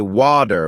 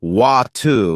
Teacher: In American English, people might say water with a D sound, while in British English it's often watu with a T sound. It's the same word, but it sounds different.